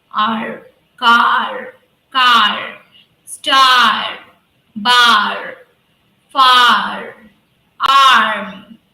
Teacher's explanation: a little touch the upper part of your mouth yeah and it should be in a vibrating way when you make that r sound